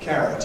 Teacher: carrot is stressed on the first syllable